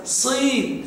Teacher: حركه الكسر صي يتباعد الفك قليلا